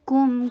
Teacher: کاف کے اوپر ضمہ، ہونٹوں کو گول کیجیے اور میم کے اوپر توسط کا ٹائم دیجیے